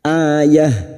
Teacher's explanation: Saat dibaca waqaf maka bunyinya ayah menjadi ha, ayah. Lalu kita mengulang atau ibtidak pada kalimat la in ja'athum ayatul la yu'minunna biha.